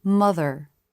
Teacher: The word mother. At the end of a syllable, the lip position for the R is definitely more relaxed than a beginning R, but the lips still flare.